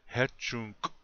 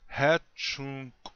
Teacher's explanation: that you put a small pause between those two sounds but with that K sound it ends up sounding like a click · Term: clicking sound